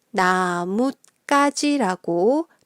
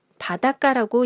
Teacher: 그리고 그 디귿 받침 뒤에 기역, 디귿, 비읍, 시옷 또는 지읒이 첫 글자로 오면 그 글자들은 된소리로 발음이 돼요. 그래서 가지의 기역이 쌍기역으로 소리 나는 거죠